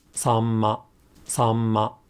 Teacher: before M, the sound isn't articulated twice, but held for an additional mora